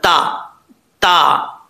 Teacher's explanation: تا کا مخرج ہے زبان کی نوک اوپر والے دانتوں کی جڑوں سے لگے